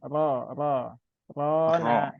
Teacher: rnya masih tipis ya masih ra ya Ra ya belum ro